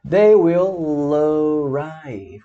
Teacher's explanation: O L junta com o A, é um Connected Speech.